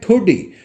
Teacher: ठोडी तो ड़ा का प्रयोग होगा, क्योंकि हमें जिह्वा को झटके से बाहर फेंकना होगा। अगर हम डा का प्रयोग करते हैं तो 2 बार मूर्धा के स्थान से जिह्वा को मोड़कर लाना होगा और उच्चारण थोड़ा मुश्किल होगा।